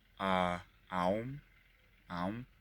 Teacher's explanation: It is pronounced through the mouth and is drawn out for about 5 seconds.